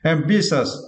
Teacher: you need to stress the second syllable